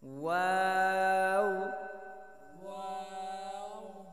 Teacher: ওয়াও বলার সময় দুই ঠোঁটটা গোল করে দিলেই হবে। প্রথমে দুই ঠোঁট গোল করিয়ে তারপর সাইডে দিব, আবার যখন শেষ করব অবলাটা তখন আবার গোল করব।